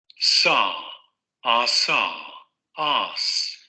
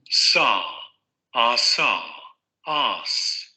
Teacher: Y el alveolar fricativo sordo, que es el que estamos viendo ahorita.